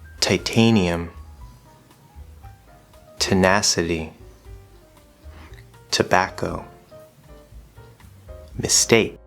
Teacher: there is a soft t sound which is unaspirated we don't hear as much air